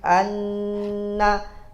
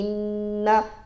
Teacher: bagaimana dengung di sini Anna dengan dengung di sampingnya lagi Inna mesti seimbang